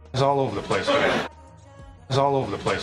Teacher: The most stress here really is in the vowel or the diphthong O, and you can see he moves his head on that all over.